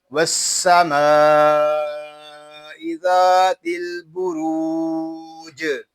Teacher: وقف میں جیم ساکن ہوگا اور اس میں کلکلہ خوب ظاہر کریں گے۔ وقف میں ہوگا وقف بالاسکان.